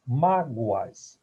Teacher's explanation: eu tenho aqui um ditongo oral crescente, semivogal e vogal. O O tem um som de U. Mágoas.